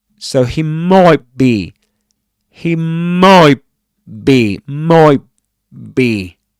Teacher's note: not pronounce the final t sound, and say he might be.